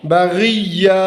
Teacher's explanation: اور یا کی تنوین جو ہے وقف کے دوران الف میں بدل جائے گی